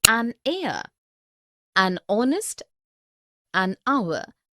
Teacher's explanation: the words air honest and our begin with the vowel sound as the initial consonant h is not pronounced